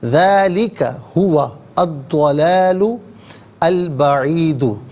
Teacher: ذالک ہوا الضلال البعید، ذالک میں ذال پر کھڑا زبر ہے تو ذال کھڑا زبر ذا اور ذال الف زبر ذا دونوں طریقوں سے پڑھ سکتے ہیں۔ ہوا میں واو پر زبر ہے، اس سے الضلال کے داد کے ساتھ ملائیں گے، درمیان میں سے الف یعنی حمزہ کو حذف کیا جائے گا